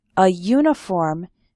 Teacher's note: we say a uniform because uniform starts with a yuh sound